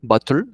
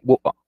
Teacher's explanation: Porque él dijo, y es algo que también hacen los británicos, como que en su afán de omitir las T's que son muy fuertes en su acento, bottle of water, en el inglés británico, ellos hacen algo que se llama el glottal stop, que es comerse la letra T, y ya no dicen bottle, sino bottle, y en vez de water, dicen wa.